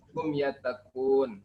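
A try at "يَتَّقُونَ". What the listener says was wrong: alahum yattaqu apa? Nani atau nu? Yattaquna.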